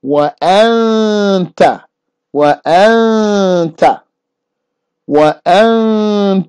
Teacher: not lifting my tongue to the place where the noon comes from. I'm just getting the ta ready.